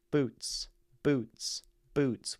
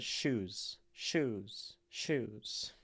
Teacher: boots is percussive like Steps shoes drags out long more uh fluid